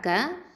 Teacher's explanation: அக்கசல் லிசான் கீழ் நாவு எழுத்து